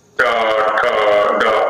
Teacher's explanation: अग्र तो टवर्ग में है, ट ठ ड, एकदम जो आगे चोंच वाला भाग है वो टकराता है